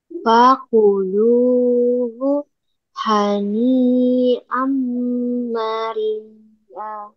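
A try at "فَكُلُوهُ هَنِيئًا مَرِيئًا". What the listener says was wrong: Rinya panjang. 5 harokat. Bukan an. Namanya made iwat. Mad iwat setiap kata tanwin di akhir kalimat atau dibaca wakof maka dibaca panjang.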